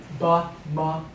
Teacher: We call these bilabials. When you pronounce them, your lips come together.